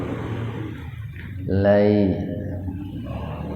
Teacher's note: huruf ya yang sukun didahului fathah, namun karena jatuh di tengah-tengah kata maka dibaca panjangnya tidak sepanjang ketika jatuh pada waqaf, pada tanda berhenti. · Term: madlain